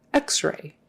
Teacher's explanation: And the accent is on the X.